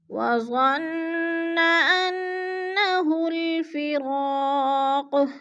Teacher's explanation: وظن کی نون مشدد ہے، غنہ کریں گے، سختی سے جمع کر پڑھیں گے، اور انا پہ بھی غنہ کرنا ہے، ناک میں آواز لے جانی ہے اور سختی سے جمع کر پڑھنا ہے۔